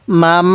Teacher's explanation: আপনাদের হ্যাঁ এটা স্মরণ রাখবেন তাহলে মিম মিম জবর মাম হ্যাঁ আমার সাথে গুন্না করুন নাকের বাঁশি গুন্নাটা করবেন